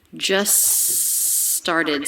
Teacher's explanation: with a consonant we tend to drop the t just started so the two words link together with a single s sound